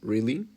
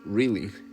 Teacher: If I say really with a rising tone, it sounds like surprise. But if I say really with a falling tone, it sounds more like disappointed.